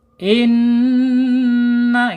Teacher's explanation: Kemudian sifat yang tidak berlawanannya yaitu sifat ghunah ketika ada ee bertasdid ya harus ditahan inna gitu ya. Kalau tasjid dia harus ditahan dua sampai 3 harakat karena hukumnya secara sifat gunah.